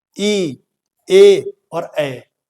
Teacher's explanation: जिन स्वरों के उच्चारण में जीभ का अग्रभाग यानी अगला भाग, आगे का भाग ऊपर उठता है, उन्हें अग्र स्वर कहते हैं। · आपकी जो जीभ है वो आगे का जो भाग है वो ऊपर उठ रहा होगा